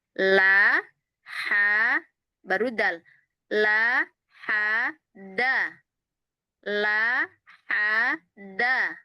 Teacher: Lihat antara lam ke ha itu enggak digerakkan lagi bibirnya, rahangnya.